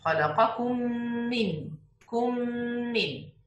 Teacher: So we should pronounce only one meme مشددة